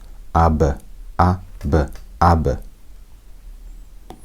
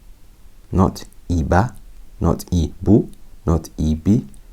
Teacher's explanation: So when I'm bouncing it, just remember I'm not putting a fatha on it. I'm not putting a dhamma on it, nor am I putting a kasra on it. I'm just bouncing it. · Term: qalqala